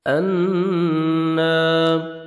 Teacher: نون مشدد ہے، غنہ کریں گے اور الف مد ہے